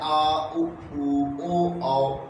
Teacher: जीव के पिछले हिस्से से बोली जाती है जो उसे हम कहते हैं पष्ट स्वर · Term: पश्च स्वर